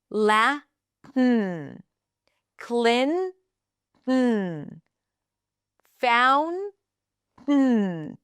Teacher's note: Tongue goes up, air comes out through the nose.